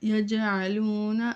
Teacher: جنبش ہے جیم میں کیونکہ یہاں پہ قلقلہ ہے